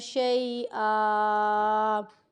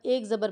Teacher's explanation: شیئا دو زبر کی حرکت ہے تو ہمیں یہاں پر وقف کرنا ہے، تو ہمیں یہاں پر ایک زبر پڑھنی ہے الف کے ساتھ ملا کر۔